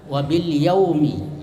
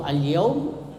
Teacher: jadi izhar itu lamnya jaharkan, dinampakkan, ya, dibaca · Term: izhar kamariyah